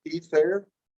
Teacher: I'm going to suggest it's probably more like the schwa and then an R.